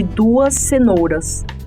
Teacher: a fricativa desvozeada de duas é produzida como Z em fim de sílaba